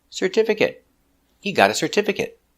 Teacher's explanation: making a short it sound because it's not a verb